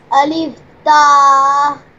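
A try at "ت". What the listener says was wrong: Ta is no long.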